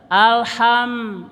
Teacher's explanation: Ha-nya suara kecekik, suara pedas.